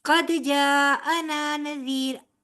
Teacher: جی اس کی ابھی میں آپ کو وضاحت دے دیتی ہوں کہ جی جی قد جاءنا نذیر، میں نے یہاں پہ وقف کر لیا تھا، ٹھیک ہے، تو وقف کی صورت میں میں نے را کو ساکن کر دیا۔ اگر آپ کی سانس اتنی جاتی ہے کہ آپ اس کو آگے تک لے کر جائیں، ٹھیک ہے، جی تو آپ اس کو نذیرن ہی پڑھیں گی۔